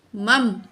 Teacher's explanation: نون تشدید ہو یا میم تشدید ہو، دونوں میں غنہ ہوتا ہے، ناک میں آواز لے جا کر ٹھہرانا ہوتا ہے